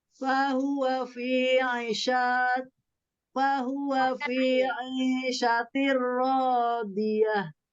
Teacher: Ro tasdidnya ini tipis ya, kemudian tebal, tipis dan tebal. Ro tasdid berarti ronya ada dua, nah, ada ro sukun, ada ro fathah.